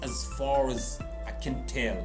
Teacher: It's as, not s. It's more like z.